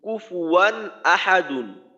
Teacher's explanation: হামজা তো দুই জবর তানবিনের পরে হামজা হলো ইজহারের হরফ তো এইখানে স্পষ্ট করে পড়তে হবে অর্থাৎ স্বাভাবিকভাবে পড়তে হবে মূল উচ্চারণটা করতে হবে কোন ধরনের গুন্না হবে না